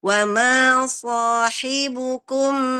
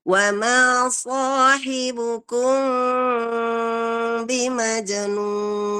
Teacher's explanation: itu adalah bacaan itbaq syafatain yang hanya menempel sedikit tanpa tekanan sama sekali, sehingga sensasinya ada getaran di bibir kita dan ada sedikit gatal ya kalau seandainya kita membaca dengan sempurna. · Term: ikhfa syafawi